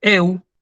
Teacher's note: fíjense que yo lo acentúo en la E, ¿sí?